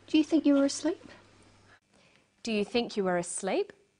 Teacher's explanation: her voice goes up at the end of the sentence we call this a rising tone